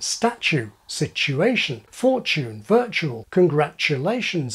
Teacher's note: T and yod coalesce to form postalveolar CH